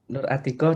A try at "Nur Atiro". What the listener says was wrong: Nur Atiro. Pakai bukan kof.